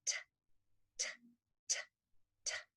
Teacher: made with your tongue tip going up behind your top front teeth, where the tongue blocks the air for a second and then it explodes out, but you keep your voice off and it sounds like a clock, alarm clock. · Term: letter T